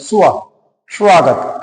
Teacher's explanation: उ का उच्चारण हो रहा है लेकिन वहां उ नहीं है